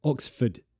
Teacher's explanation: So first, stress on O. Ox. Weak form, ford.